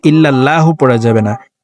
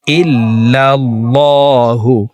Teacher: এই লামকে মোটা করে অর্থাৎ ল বলে পড়ব।